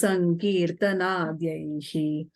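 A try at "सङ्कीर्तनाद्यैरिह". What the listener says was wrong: if you have fourth line, Sankirtanadhyahi, if you have a visarga there, you have to put a R. So, Sankirtanadhyair iha Kalisamaye.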